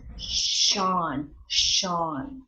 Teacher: the S dot under is the tongue is a little more forward